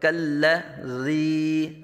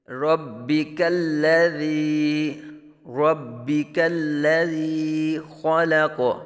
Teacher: ربک الذی، کاف بریک، لام بریک، کالذی، زال بھی نرمی سے ادا کریں گے، سیٹی نہیں یہاں بجے گی